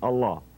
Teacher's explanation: the dhamma on the end of allah is dropped when you stop the name there it's only continued when you say allahu akbar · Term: last vowel drops